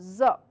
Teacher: vibrate the vocal cords strongly. This should create a buzzing in the mouth. So this is a voiced sound, so please practice using the vocal cords.